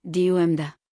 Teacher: Trochaic, stressed then unstressed, DUM da.